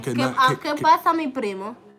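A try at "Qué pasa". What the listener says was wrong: Que pasa, not que paso, que pasa.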